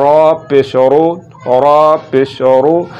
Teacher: را پر اگر پیش ا جائے تو پھر بھی را کو ہم نے پر کر کے ہی پڑھنا ہے